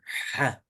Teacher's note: it's not a normal H. It's ha, deeper from the throat, more emphatic. So like a hanger or a hook, they start with the H sound, but deeper.